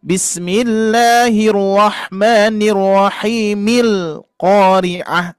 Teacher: Nah, kan ini hamzah wasol nih. Hamzah wasolnya tidak dibaca ketika mewasolkan ke kalimat yang berikutnya.